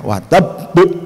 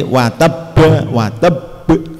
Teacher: setelah disukun harus dikolkolan watabbu ya ditekan ya, terus dipantulkan watabbu, itulah namanya bacaan kolkolah tadi ya.